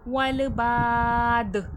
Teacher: والباد، با میں الف مدہ کھینچ کر، دال میں قلقلے کی صفات واضح ہوگی، آواز پلٹ کر سنائی دے گی